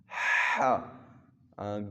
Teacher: گلے کے ساتھ زبان کے جڑ کے قریب آواز کو رگڑ کر سختی کے ساتھ ہا ادا کریں گے، اس کو حلق کہتے ہیں۔ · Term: وسط حلق